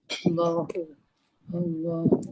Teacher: Lam dibaca dengan tebal apabila lam tu berada dalam kalimah Allah. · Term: lam tebal